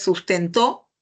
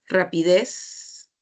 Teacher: las palabras agudas llevan la mayor fuerza de voz en la última sílaba